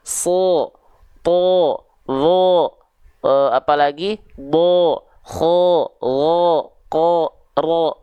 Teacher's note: Itu ketika fathah dia vokalnya o kan? Karena dia adalah huruf yang tebal.